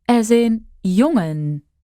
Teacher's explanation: An N made in the back of your throat.